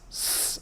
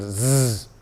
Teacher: s is voiceless and Z is the same sound voiced